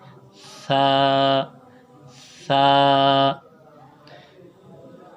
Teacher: سا کی ادائیگی میں یہ ہے کہ زبان کی نوک اوپر کے دانتوں سے لگے اور منہ پوری طرح کھلے۔